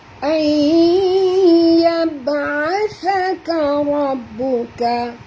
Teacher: Ra ini tebal, dengan ra baris atas kena baca tebal, dan dia bertemu dengan ba kena baca njut, kan di atas ba dia tasydid. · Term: ra tebal